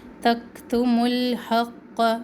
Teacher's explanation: میم پیش کو لام ساکن سے ملائے